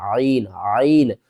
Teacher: حلق کے درمیان والے حصے سے ادا کرنا ہے